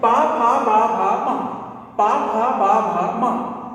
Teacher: पा फा बा भा मा, ये बिना ओंठ के नहीं हो सकते कभी।